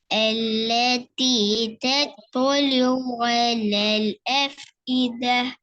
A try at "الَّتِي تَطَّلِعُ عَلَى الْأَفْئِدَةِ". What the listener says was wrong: good இன்னும் கொஞ்சம் ஐன் எடுத்து ஓதலாம் அழகா வருது இன்னும் கொஞ்சம் எடுத்து ஓதும் التي تطلع على الأفئدة